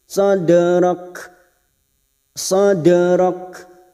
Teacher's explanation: sifat dari huruf Kaf pada saat dibaca wakaf terasa yaitu sifatnya yang Hames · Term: hamas